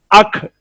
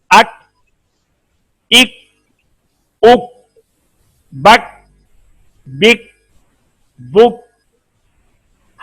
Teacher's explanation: جب کاف کو ادا کریں تو آواز کے فوراً آواز بند ہونے کے فوراً بعد زبان کو وہاں سے ہم نے نہیں چھوڑنا، ڈگا رکھنا ہے تاکہ ہا کی آواز پیدا نہ ہو